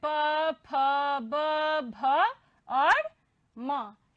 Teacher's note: पवर्ग प, फ, ब, भ और म, इनका उच्चारण किससे होता है, ओष्ठ से होता है।